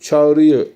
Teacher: Çağırmaktan I harfi düşmüştür. Dolayısıyla ünlü düşmesi de olmuştur.